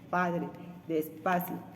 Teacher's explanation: el punto de articulación es los labios el articulador activo es labio inferior y el pasivo es labio superior ésta se produce cuando los labios cerrados con una abertura de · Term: P bilabial oclusiva sorda